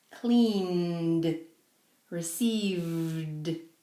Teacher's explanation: the letters before ed are not aspirated, they create a vibration. For example, put your hand on your neck and say clean.